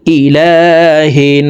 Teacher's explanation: তাসদিয়া ননের সাথে তিন সেকেন্ড পরিমাণ গুন্নাহ করে পড়বো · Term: ওয়াজিব গুনা